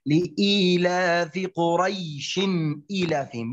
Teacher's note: في الوصل مد اللين لا مد فيه لا يوجد مد أما العرض للسكون يوجد مد حركتين فقط أما عند الوقف مد اللين ومد العارض للسكون سواء حركتين أو أربعة أو ستة فقط هذا هو الفرق.